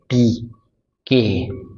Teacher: अब साउंड एक दफ़ा रोकी हमने, एयर एक दफ़ा रोकी एंड देन उसको रिलीज की